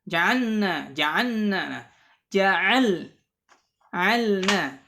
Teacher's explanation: Yang pertama adalah pada lam. Ya, al-lam fi ja'alna. Hati-hati jangan sampai menyerupai nun. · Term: sukun